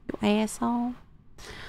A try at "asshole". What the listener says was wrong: Don't pronounce the L, just asshole.